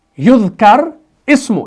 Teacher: اصل میں یہ تھا یذکر اسم, یہاں پر زیر کے ساتھ پڑھا جائے گا اگر الگ پڑھیں گے. لیکن یہ حمزۃ الوصل ہے, جب آپ اس کو ملاتے ہیں وصل کی صورت میں تو یہ نہیں پڑھا جاتا, تو یہ بن جاتا ہے یذکر اسم.